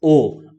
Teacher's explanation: तो इसको कंठस्थ क्यों बोला गया है आप देखेंगे कि ओ जो है वो हमारे कंठ से भी आ रहा और साथ ही साथ होठों के द्वारा भी थोड़ा सा इसका उच्चारण हो रहा है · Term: कंठ होष